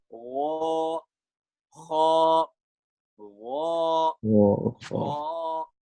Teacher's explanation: You feel the vibration in the upper halaq.